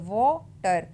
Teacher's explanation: तो वो टर, मेरा ख्याल है वो पे आपको निशान नज़र आएगा, क्योंकि वो को ज़रा हम बड़ा पढ़ रहे हैं और टर पे हम ज़्यादा एम्फसिस नहीं डाल रहे